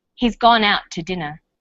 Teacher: we link out which is stressed and two which is unstressed the final t sound in out is held slightly longer